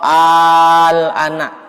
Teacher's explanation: mad tabi'i bertemu dengan huruf yang sukun asli itu al-ana, makanya dibaca 6 harokat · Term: mad lazim